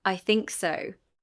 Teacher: Full rise intonation is used to express uncertainty, doubt or politeness. The pitch falls then rises. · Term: fall rise intonation